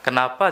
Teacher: Bedanya itu kita turunin intonasi.